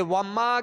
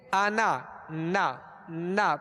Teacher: تھوڑی سی آواز جو ناک کی طرف سے لوٹ کر آ رہی ہے یہ غنہ ہے ، اور اسے کہتے ہیں غنہ آنی، یعنی اس کی مقدار